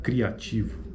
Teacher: Mas a acentuação, a proeminência acentual ocorre na vogal A, né? Então, logo ela é crescente.